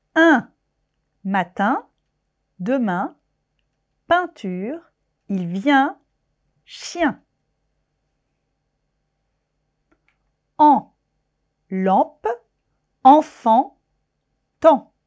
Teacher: l'air passe par la bouche et par le nez on abaisse le voile du palais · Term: les voyelles nasales